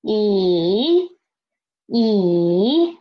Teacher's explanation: The next is let's try first tone second tone is rising up and third tone drop first and then rise up